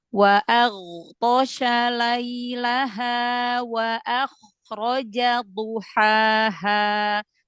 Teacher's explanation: jadi ghain jangan memantul ya, karena dia punya sifat rokhwah, jadi dialirkan suaranya.